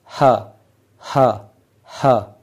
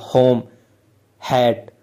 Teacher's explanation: सिर्फ गले में से ग्लॉटिस में से आवाज निकल रही है ह ऐसे ही होम हैट इस तरह तो ये जो वॉइस है इसको ग्लोटल वॉइस ग्लोटल साउंड या ग्लोटल कोसोनेंट बोला जाता है और यह एक ही है। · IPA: [h]